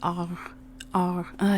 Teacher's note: And you don't roll it like in a lot of languages, and there's no harsh throat sound with it.